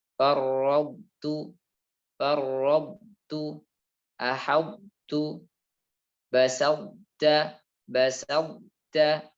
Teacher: kita tahu to dan ta satu tempat pengucapan, yaitu ujung lidah bertemu dengan pangkal gigi seri atas. Maka dibaca dengan menyisakan sifat idbaqnya. Jadi sifat tebalnya to tetap ada. Akan tetapi sudah tidak ada qalqalahnya karena sudah diidghamkan. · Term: idgham mutajanisain